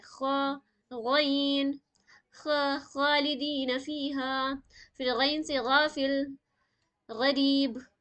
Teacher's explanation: جیسے خا کی آواز ایسے نکلے گی جیسے کہ کھراٹا مارا جاتا ہے نا، ویسے نکلے گی